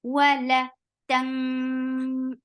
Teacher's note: this ikhfa is heavy. Why? Because the heavy letter is coming up, and this is sod.